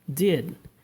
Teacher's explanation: The first D, as I said, is strong, and the second D is almost like just resting your tongue against the front teeth without doing much.